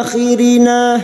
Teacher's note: na fathah diikuti Alif dua harakat